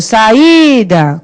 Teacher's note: a gente achou o I sozinho na sílaba tônica